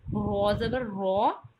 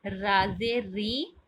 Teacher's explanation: رو کو جب اس کے اوپر فتحہ اور دومہ آ جائے تو پر پڑھا جائے گا، جبکہ را کے نیچے زیر آ جائے تو را باریک پڑھی جاتی ہے